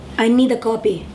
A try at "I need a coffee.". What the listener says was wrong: No, you're saying copy? Like print of copy paper? Say fee. Fee. These are supposed to be fee with F sound.